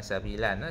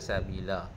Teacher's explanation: Lam fathatain bila tawaqaf dia akan jadi lam fathah sahaja. Lam. Lam dibaca 2 harakat.